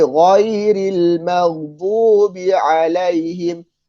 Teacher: Ri dekat sini perlu dibaca dengan nipis sebab ra tersebut berbaris bawah.